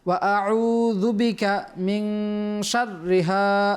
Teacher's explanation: নুন সাকিনের পর শিন আসছে, ইখফার হরফ, গুণনা করতে হবে